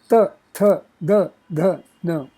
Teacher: dantya consonant sounds, which emanate from dantaha, back of the denture